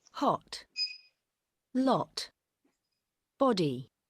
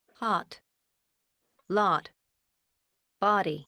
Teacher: The O of hot, and saw, talk. It's more open in American